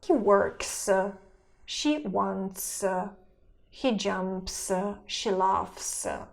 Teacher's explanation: We read this ending as s after voiceless consonants. That is, after the sounds p, t, k, f, and th.